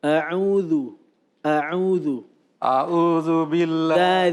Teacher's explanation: dilembutin lagi the, bukan zu, tidak ada desis. A'udzu.